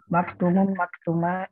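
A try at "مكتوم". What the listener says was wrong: Panjang tuhnya. Maktumun.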